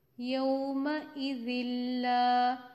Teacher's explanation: نون ساکن یا تنوین کے بعد لام یا را آ جائے تو ادغام بلا غنہ کرتے ہیں. ہم نے نون کو تنوین کو مکس کیا لام میں لیکن غنہ نہیں کیا